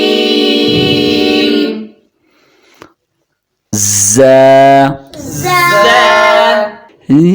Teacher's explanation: زا، زا، زا کے اوپر ایک ڈاٹ ہے، زا کے اوپر ایک ڈاٹ ہے۔ زا کو باریک اور ایک الف کے برابر کھینچ کے پڑھنا ہے